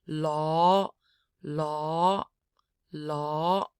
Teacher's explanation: L, aw with a rising pitch. Law, law, law.